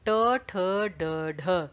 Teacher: मूर्धन्य वो होती हैं जिसमें आपकी जो जीभ है, जिह्वा, वो टेढ़ी हो जाती है, गोल घूम जाती है। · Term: मूर्धन्य ध्वनियां